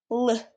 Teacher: The air flows around the sides of the tongue instead of down the middle. The air escapes along the sides of the tongue. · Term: lateral approximant